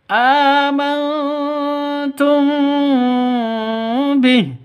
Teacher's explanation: Nun matinya samar, taknya samar. Mim matinya samar, ba-nya juga samar. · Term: ikhfa